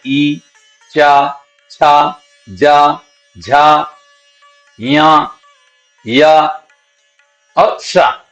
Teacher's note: कि उसके अंदर का हिस्सा थोड़ा ऊंचा हो जाता और अंदर से आने वाली प्राण वायु जो है वो सीधी तालू से टकरा के बाहर आती है कंठ से नहीं टकरा रही है सीध तालू से टकरा रही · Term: तालव्य